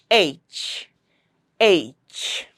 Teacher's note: And one interesting thing about the sound of H is that the s the tongue does not have any role in articulating this sound. This sound is articulated by the vocal cords in your throat in the glottal area. Glutus is a valve inside our throat and that's the valve between your lungs and your vocal cords. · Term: fricative